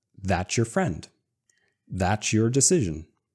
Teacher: we take the t S and Y, throw it away, and still add the ch sound.